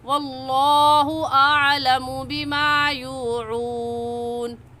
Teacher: لفظ اللہ سے پہلے زبر آ گیا، اس لیے اس لفظ اللہ کو پور یعنی موٹا کر کے پڑھیں گے، اور موٹا کرنے کا طریقہ کہ آپ کے دونوں ہونٹ گول ہو جائے